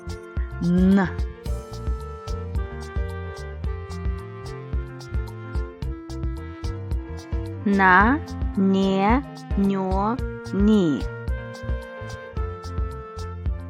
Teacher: It is a nasal sound. The soft palate is lowered and air passes through the nose. The lips and teeth are open.